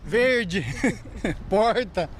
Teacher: Este é o R retroflexo, o popular R caipira.